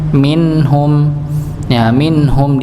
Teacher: minhum di sini ada nun sukun ketemu dengan ha maka dibaca jelas.